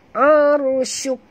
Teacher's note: La aha kaza aha, dalam bunyinya kaza la sentil lidah, arusuk ra mati huruf sebelumnya, baris atas kena baca tebal aru arusuk ya, bunyikan hamas pada huruf kaf yang kita matikan